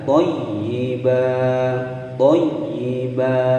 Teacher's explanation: ba, dia berbaris fathatain di akhir kalimat, maka dia dibaca panjang selama 2 ketukan ya, karena dia hukum bacaan mad iwad.